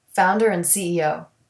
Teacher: Delete the D in the word and.